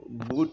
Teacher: বুট শব্দের উচ্চারণ করার সময় আমাদের জিহ্বাটা পিছনের দিকে অগ্রসর হয় ব্যাক অগ্রসর ব্যাকওয়ার্ড হয় তাই এটা হচ্ছে ব্যাক ভাওস ঠিক আছে